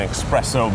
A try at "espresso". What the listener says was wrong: You're saying espresso? There's no k in it. It's just espresso.